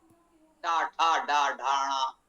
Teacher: दांतों से ऊपर मसोड़ा या मुर्धा कहते हैं उसे वहां से जिन वर्णों का उच्चारण होता है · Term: मुर्धन उच्चारण